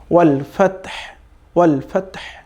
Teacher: Just একটু কণ্ঠ থেকে মানে একটু শীষের মতো করে আওয়াজ বের হবে। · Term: সাকিন হা